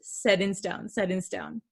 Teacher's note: you can't really hear that t sound here